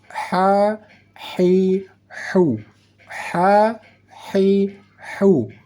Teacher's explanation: Saat kita membaca huruf H, seolah-olah ada desis angin halus yang kita masukkan atau kita keluarkan dari kerongkongan atau ke dalam kerongkongan. Seolah-olah saat kita membaca huruf H ada suara angin halus.